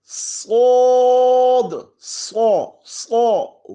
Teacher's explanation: رو رو رو رو رو رو ز سین شین صاد. صاد میں سیٹی کے ساتھ، سیٹی کے بعد آواز کو موٹا کر دینا ہے